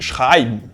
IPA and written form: ˈʃʁaɪ̯bn (shraybn)